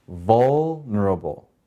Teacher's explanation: vul has the accent, the first syllable